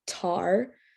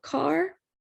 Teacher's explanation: they're using t instead of the k sound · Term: fronting